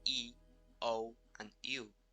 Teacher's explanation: when you say O and U your lips make a circle but when you say e they are stretch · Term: rounding